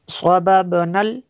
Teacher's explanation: انا صببنا، صببنا، آگے اس کو ملا کے پڑھیں گے، صببنا، یہ یہاں پہ قلقلہ ہوگا با پہ